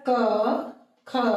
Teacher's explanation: अब क ख बोलते समय कोई गूंज उत्पन्न नहीं हुई। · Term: अघोष वर्ण